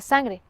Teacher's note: la nasal tiene articulación velar por causa de la g